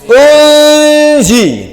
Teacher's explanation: Jadi kita masukkan samar-samar nun mati ke dalam zai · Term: Ikhfa